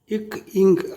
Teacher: இக், இங் ஆகிய இரு மெய்களும் நாவின் முற்பகுதி அன்னத்தின் அடிப்பகுதி பொருந்துவதால் பிறக்கின்றன.